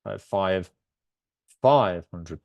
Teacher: we stress the five to differentiate it